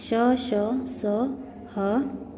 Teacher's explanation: इन वर्णों का उच्चारण करते समय श्वास तीव्र गति से मुख से रगड़ खाती हुई बाहर निकलती है, जिससे गर्मी उत्पन्न होती है, इसलिए ये ऊष्म व्यंजन कहलाते हैं।